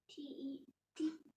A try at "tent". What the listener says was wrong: How does that sound when you read it? Tet. That's T-E-T. Tet. Tent. What letter did you leave out? The T-E is right. What letter did you leave out?